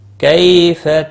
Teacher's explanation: کیف یالین ہے، تھوڑا نرمی کے ساتھ کھینچ کر ادا کریں گے۔ تک کیف پر قلقلہ نہیں ہونا چاہیے کیونکہ حروف قلقلہ میں سے نہیں ہے۔